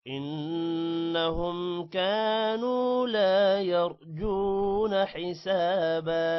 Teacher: حسابا سین کے بعد الف ہے لمبا کریں گے، با کو بھی لمبا کریں گے